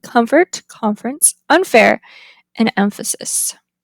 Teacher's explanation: when M and N are followed by F the place of articulation is altered due to the influence of the place of articulation for f